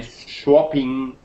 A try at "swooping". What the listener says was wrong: Well, I heard swapping there. You know, swapping cards, swapping business cards. I heard that. It's not swapping, and swapping is when you exchange something, like business cards or something, or telephone numbers with somebody. But this is swooping. Ooh, swooping. Swoop. Ooh, like boot. Swooping.